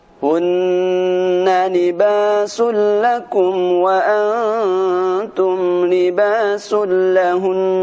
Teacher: Huruf nun ketika bertasydid maka dia akan dibaca dengan dengung. Ketika di akhir bacaan pun tetap harus dibaca dengan dengung.